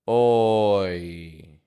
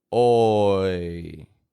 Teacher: Now, it's essential here that you don't move your lips really strong, like oi. It's a clear transition where your tongue moves back and your jaw moves up, but you don't need to move your lips